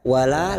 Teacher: lam alif 2 harakat kita panjangkan